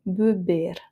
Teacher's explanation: Alors, effectivement, le premier E est plutôt nasal. Be, c'est le deuxième E qui est tonique et comme il est à la fin devant un R, on le prononce et fermé. Beber.